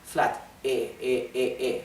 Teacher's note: There is no variation in the tone, right? It's one tone, one sound.